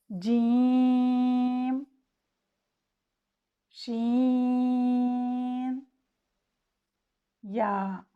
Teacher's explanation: जब ज़बान का दरमियानी हिस्सा तालु के दरमियानी हिस्सा से टकराता है तो इन हुरूफ की अदायगी होती है। जबड़े के इस दरमियानी हिस्से को शजरे फम कहते हैं। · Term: हुरूफ शजरिया